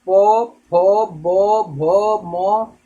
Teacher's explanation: ये जो भी होते हैं ये आपके ओष्ठ व्यंजन, क्योंकि इसमें जो क्रिया होती है ओठ की, क्योंकि दोनों ओठ आपस में सटते हैं फिर खुलते हैं